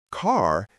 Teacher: the American accent often uses a strong R sound